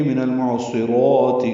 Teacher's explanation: را پر کھڑا زبر ہے، دو حرکات لمبا بھی کریں گے